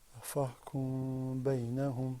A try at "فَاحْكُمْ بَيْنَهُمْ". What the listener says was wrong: Okay, you need to part your lips a little bit more.